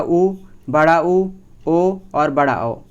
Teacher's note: इन सभी को जब आप बोलोगे तो आपके मुख की आकृति वृत्तमुखी अर्थात गोलाकार बनेगी।